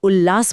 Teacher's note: त की जगह पर भी जीभ को ल वाली जगह पर ही खड़ा कर देता है। अरे वाह। इसलिए उत प्लस लास बोलने के बजाय मुंह सीधा उल्लास बोल देता है।